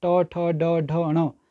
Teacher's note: ट, ठ, ड, ढ, ण आपके मूर्धन्य व्यंजन हैं।